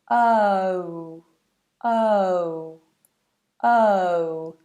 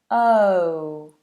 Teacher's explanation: we start nice and open and bring it to rounded lips